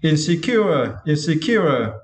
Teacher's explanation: you need to stress the third syllable. Cure.